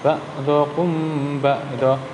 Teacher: apabila mim bertemu dengan ba, maka suara mim tersebut harus dibaca samar. Antara mim dan ba ditahan kira-kira 2 ketukan. Seperti contohnya gini, yang bagian ini ba'dzukum ba'dzu. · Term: ikhfa safawi